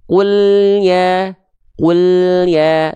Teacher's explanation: tanpa adanya pantulan pada huruf lam sukunnya